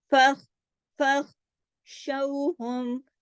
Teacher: موٹا حرف خا، ایک تو اس کا خیال کرنا ہے، دوسرا خراش کے ساتھ ادا ہوتا ہے، تیسرا یہ سکون کے ساتھ ہے · جماؤ کے ساتھ، اس کو ہلا نہیں دینا، اس پہ کلکلا نہیں کر دینا